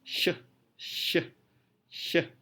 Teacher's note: Masuk ke post-alveolar. Post-alveolar adalah suara yang diproduksi dengan menyentuhkan lidah ke daerah yang kurang lebih di sekitar belakang alveolar ridge.